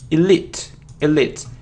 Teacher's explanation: isn't Elite and it isn't Elite it's e elite elite and the stress is on the second syllable